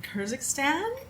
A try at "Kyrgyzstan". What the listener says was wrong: Close. Kyrgyzstan. It was a blend of Kyrgyzstan and Kazakhstan, you said. But Kyrgyzstan.